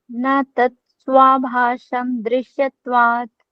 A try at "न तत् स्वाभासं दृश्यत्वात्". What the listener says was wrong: Perfect.